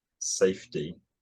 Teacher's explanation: if there's any kind of fricative immediately before a t, it gets deaspirated.